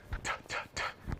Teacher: If you say cat, t, t, t, you don't feel your vocal cords vibrating.